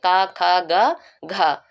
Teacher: क वर्ग पूरा किसके अंतर्गत आता है कंठ के अंतर्गत आता है